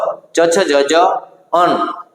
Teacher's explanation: જે વર્ણોના ઉચ્ચારણમાં જીભ નો મધ્ય ભાગ એટલે કે વચ્ચેનો ભાગ જે છે કઠોર તાળવાને સ્પર્શે અને અવાજ ઉત્પન્ન થાય છે અથવા અવાજ ઉત્પન્ન કરે છે તો તેને આપણે તાલવ્ય વર્ણો કહેવાય